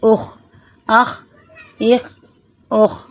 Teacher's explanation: حلق کا جو شروع والا حصہ ہے اس سے خا ادا ہوتا ہے اور وہیں پر اس کی آواز رک رہی ہے۔ حمزہ خا زبر اخ، حمزہ خا زیر اخ، حمزہ خا پیش اخ، اخ، اخ، اخ۔